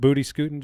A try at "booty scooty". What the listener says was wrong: Well, you went with scooting instead of scooty. You said scoot.